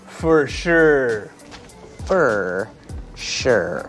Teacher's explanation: when we speak a little faster the word for kind of becomes fur